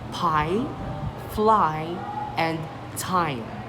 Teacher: your tongue starts low and central and glides up a high front position, like the word pie, fly, and time. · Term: long i, long I